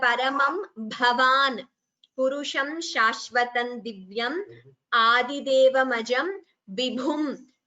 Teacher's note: The Bha Mahapranas should be clearer.